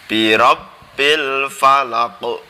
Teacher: Karena kita tahu huruf qalqalah ada to, ko, ba, ja, da, ada 5. Ini qalqalah kubro, maka bacanya memantul dengan jelas.